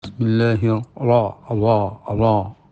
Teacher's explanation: Kalau huruf isti'la itu tebalnya dengan pangkal lidah, dinaikkan. Sedangkan ra itu penebalannya adalah seluruh lidah ini membengkak gitu ya, sehingga memenuhi mulut.